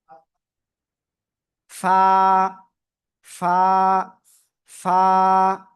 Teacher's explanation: নিচের ঠোঁটের পেট উপরে দুই দাঁতে লাগান, লাগিয়ে আমরা উচ্চারণ করব।